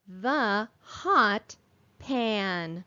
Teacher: digraph th is making its voiced sound